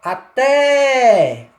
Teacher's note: Percebe que a pronúncia mais forte, mais demorada é na vogal E? Então aí nós temos uma vogal, um exemplo claro de vogal tônica, tá?